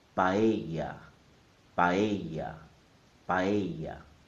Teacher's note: The correct pronunciation is in 3 syllables. Pa, e, ya. The stress is on the E sound.